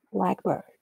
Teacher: The adjective noun pair, blackbird, also exhibits a clear pitch reset at the beginning of the second word, while the pitch contour for compound is again a relatively steady falling one